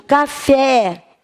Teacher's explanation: Quando eu digo café, esse E faz som aberto ou fechado? faz aberto. Se faz som aberto, acento agudo.